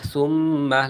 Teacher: সামিম পেশ সুম, নুনে মিমে তাশদিদ ওয়াজিবে গুন্নাহ